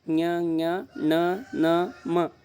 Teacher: ನಾಸಿಕದ ಅಂದರೆ ಮೂಗಿನ ಸಹಾಯದಿಂದ ಹುಟ್ಟುವ ಅಕ್ಷರಗಳಿಗೆ ಅನುನಾಸಿಕಗಳು ಅಂತೇಳಿ ಕರಿತೀವಿ